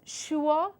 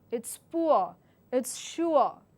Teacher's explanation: there's a short oo sound with a schwa in it